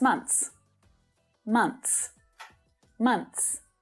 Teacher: pronounce this word in a sentence with other words around it you're much better off skipping the th sound and just saying mons